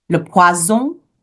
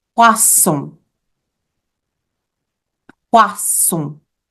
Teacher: If we get a little lazy and we pronounce it with a Z sound, le poison, then we are ordering poison. So le poison with a Z sound is poison, but le poisson is fish with an S sound